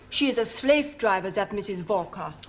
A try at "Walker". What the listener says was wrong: Walker. W is pronounced W. Walker.